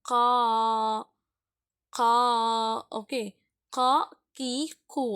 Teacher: பட் நாக்கும் இந்த இடத்துல தேவைப்படும். கா, நாக்கு கொஞ்சம் மேலே ஏறிடும். சரிங்களா? ஆனால் எதுலேயும் படாது. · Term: கா சவுண்டு